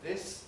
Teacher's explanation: the s of sign is also voiceless so the voicing switches off quite early